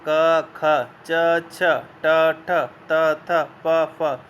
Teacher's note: अघोष। जिन व्यंजन ध्वनियों के उच्चारण में स्वर तंत्रियों में कंपन नहीं होता उन्हें अघोष व्यंजन कहते हैं। व्यंजन वर्गों के प्रथम 2 यानी पहले दूसरे वर्ण अघोष होते हैं।